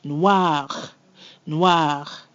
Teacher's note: we have the word noir, which means black, and the R there is very subtle, but it is there. I'm going to exaggerate it a little bit.